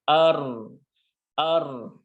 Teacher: ro-nya ketika sukun, maka bibir kita seperti maju ke depan. Ya, bibir kita majukan ke depan. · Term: tebal